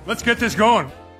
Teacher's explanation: you can hear only one t sound this is a common feature of connected speech when one word